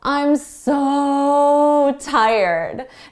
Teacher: a little bit what native speakers can be quite dramatic and we can really hold out that so